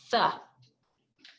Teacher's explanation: Your tongues are between your upper and lower teeth. Air does not flow freely from your mouth. It is slowed down as it moves around your tongue.